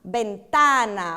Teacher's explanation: A sílaba forte é tá